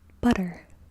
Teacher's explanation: that tapped sound actually exists in English, but we consider it to be a variation of t or duh